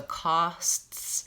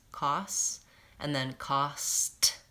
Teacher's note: so costs I'm having to move from the S to the T to the S